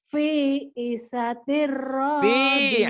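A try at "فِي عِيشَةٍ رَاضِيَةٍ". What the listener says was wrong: Fi'i. Panjang juga. Fi'i. Shin. Shin. Fi'i sya. Shin. Tapi pendek. Fi'i syatir. Fi'i syatir radiyah.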